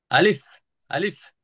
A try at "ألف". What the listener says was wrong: হ্যাঁ, এটা দ্রুত বলতে হবে, কোনো টান নাই। এরকম বলবেন, দাঁত বলে এই ঠোঁটের এখানে এরকম লেগে যাবে। আলিফ। আলিফ। হ্যাঁ, হ্যাঁ, এরকম বাতাস বের হবে আর দ্রুত বলবেন। আলিফ।